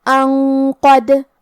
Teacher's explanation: ہم یہ حکم کو غنہ کے ساتھ ادا کریں گے، کیونکہ قاف حروف تفخیم میں سے ہے اور غنہ اپنے اگلے والے حرف کا حکم لیتا ہے تفخیم میں اور ترقیق میں، تو ہم یہ غنہ کو بھی بھاری آواز میں پڑھیں گے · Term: الاخفاء